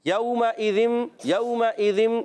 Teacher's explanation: زبان کا سرا اوپر والے دانتوں کے کناروں سے، اندرونی کنارے بھی بیرونی کنارے دونوں سے ادا ہو سکتا ہے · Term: ذال کی ادائیگی